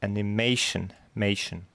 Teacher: Третий слог под ударением